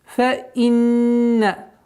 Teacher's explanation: Удержание в размере двух огласовок, назализация